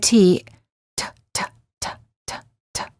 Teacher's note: You will notice that the tip of your tongue is touching and releasing your gum ridge, which is the upper part of your mouth right behind your front teeth. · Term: fully pronounced T